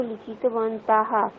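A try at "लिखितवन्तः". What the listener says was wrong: বন্তঃ আকার নয়।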